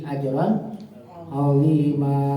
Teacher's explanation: Tanwin bertemu ain izhar jelas bunyinya, non matinya. Ajran tanpa ditahan enggak boleh.